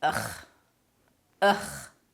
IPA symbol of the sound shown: əx